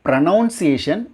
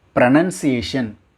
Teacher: நாட் நவுன் அப்படிங்கிற sound இடையில வராது